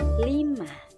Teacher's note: dihasilkan dengan cara menghalangi arus udara di tengah lidah sehingga udara dapat mengalir keluar melalui sisi-sisi lidah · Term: bunyi lateral